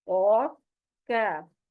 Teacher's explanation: قاف زبان کی جڑ لگے گی نرم تالو کو تو یہ موٹی آواز میں قاف ادا ہوگا، اور کیف جو ہے یہ باریک آواز کے ساتھ ہے، اور یہ زبان کی جڑ آپ کے سخت تالو کو لگے گی تو یہ زبان جو ہے نا کیف ادا ہوگا۔